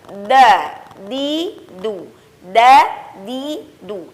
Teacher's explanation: dal itu dilafazkan dengan suara yang tipis dan posisi lidah dengan pita suara yang dibuka secara sempurna